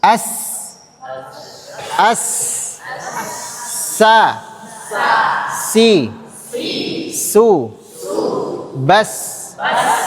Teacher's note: Ada udara yang keluar dan sifat huruf sin adalah rakhawah. Rakowah. Rakhawah yang artinya suaranya panjang. · Sifat hams ini yang membuat ada udara yang keluar.